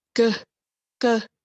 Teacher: produced in the back of mouth because the tongue is placed against the velum at the back of the mouth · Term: Velar